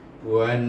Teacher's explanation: Jadi kita idgham samsikan waw dengan nun. Dan nun itu bertasydid, maka kita dengungkan dia. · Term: wajibul gunnah